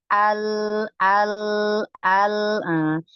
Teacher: 50% suara tertahan, 50% suara keluar melalui samping. Itu lam.